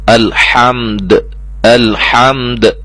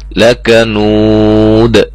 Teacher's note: साकिन करके अच्छी तरह कलकला के साथ अदा किया जाएगा, हिलाकर जुम्बश के साथ, जैसे लकनूदुन से लकनूद वगैरह।